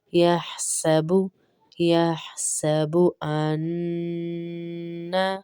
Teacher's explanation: غنہ ہوگا انا میں، یا میں ہا کی آواز بھی آئے گی اور سین پہ سختی ہوگی